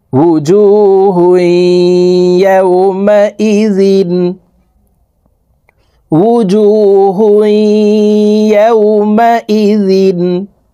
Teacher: তানউইনওয়ালা হাটি তাসদিদওয়ালা ইয়ার সাথে গুন্নার সহিত মিলাইয়া পড়ব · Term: ইদগামে বা গুন্নার